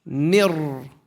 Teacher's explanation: The meme goes straight to the ra. We skip over the noon. We merge it. Mir. Without a nasalization.